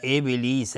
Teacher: با اینجا قلقله میخواد چون ساکنه